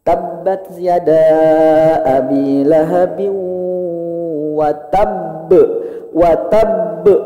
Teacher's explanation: Cara bacanya ditahan dulu baru dipantulkan. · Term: qalqalah besar